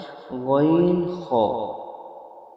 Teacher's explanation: খালাক বা কন্ঠনালীর শেষ ভাগ হইতে উচ্চারণ হয় গাইন খ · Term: তিন নাম্বার মাখরাজ